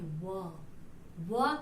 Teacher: दंत और होठ दोनों के से हम किसका उच्चारण करते हैं, व का उच्चारण दंतोष्ठ से होता है